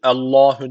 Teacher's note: Allah lafzı kalın okunacak çünkü önces üstten bağlanıyor